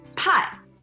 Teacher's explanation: you gotta make sure it's pronounced with a fourth tone, like a karate chop